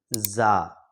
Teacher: یہ جو زا حرف ہے، جب بھی ہم یہ پڑھیں گے تو ہماری جو زبان کا نوک ہے نا، وہ نیچے کے جو چار دانت ہے، نیچے کے جو دانت ہے ان کے درمیان میں یعنی بیچ میں جا کر ٹچ ہونا چاہیے، پھر جا کر یہ حرف ادا ہوتا ہے زا۔